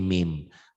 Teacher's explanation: iklab bunyi nun matinya berubah menjadi mim mati. Asalnya min jadi mim.